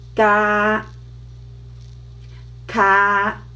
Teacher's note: both are touching the soft palate in your upper part. So ga, ka.